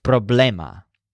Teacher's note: in Spanish the stress is on the syllable that sounds like blame